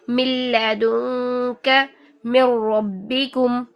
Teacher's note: लाम के ऊपर या फिर रॉ के ऊपर जो शद आ रही है इदगाम की वजह से उस पर हमने दबाव जरूर देना है।